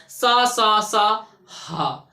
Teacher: जब हम बोलेंगे, सा को बोलते हैं, तो हमारे मुंह से जो गर्म हवा निकलती है उसको ही ऊष्मा कहते हैं। वही संघर्ष से निकलती है, एकदम घिसके निकलती है, तो इसीलिए कहते हैं इसको ऊष्म व्यंजन, सा हा। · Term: संघर्षी व्यंजन